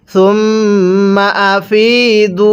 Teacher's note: ফায়ের মধ্যে টান দিব, হামজায়ের মধ্যে টান দিব না।